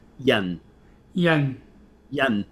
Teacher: it has to be like a low falling tone